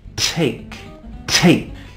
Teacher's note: for the T sound we also need to stop the air but not with a lips with a tongue so I take my tongue and my tongue goes up and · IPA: /teik/